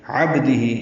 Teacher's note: عین ہے وسط حلق سے ادا ہوگا ، با ساکن پہ قلقلہ ہے، ہی مد صلہ کبرا ہے · ہے، عبدہ یہاں بھی عین ہے وسط حلق سے ادا ہوگا، با ساکن پہ قلقلہ ہے